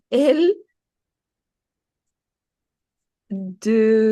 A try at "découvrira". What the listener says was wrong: C'est pas deux, mais c'est et. Il y a un accent. Donc ici, tu vois qu'il y a un accent. C'est pas de, découvrira, mais c'est des.